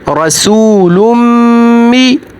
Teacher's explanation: यहाँ पर मीम मुतशद्दद है, मीम मुतशद्दद पर हमेशा गुन्ना होगा